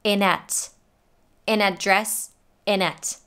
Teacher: she drops the TH. And by connecting those words together, we get inet.